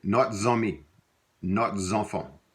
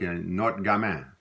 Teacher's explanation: you would only hear the S when it's followed by a vowel sound.